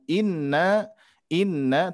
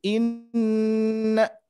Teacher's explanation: Nun bertasydid tentunya harus kita dengungkan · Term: nun bertasdid